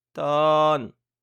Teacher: La consonne initiale est moyenne donc le ton est plat. La consonne initiale est le H.